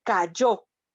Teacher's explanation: en la palabra callo, la sílaba tónica es la última y en este caso está marcada además con un acento ortográfico